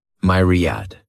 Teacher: This word has 3 syllables, and the stress is on that first syllable. Mere sounds like mere.